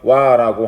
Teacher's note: 와라고 하는 하나의 이중 모음으로 줄어드는 겁니다